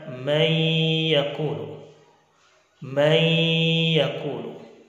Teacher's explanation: Man yaqulu dibaca may yaqulu. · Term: idgham bi gunnah